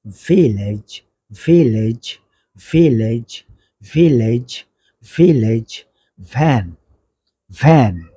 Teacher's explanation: নিচে ঠোঁট স্পর্শ করে উচ্চারিত হবে এফ এফ এরপর আসেন ভি ভি এর উচ্চারণ করবে উপরের দাঁত নিচের ঠোঁটে স্পর্শ করে